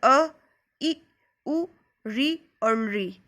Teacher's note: हश्व स्वर, ये 5 होते हैं जिनको बोलने में एक मात्रा का ही समय लगता है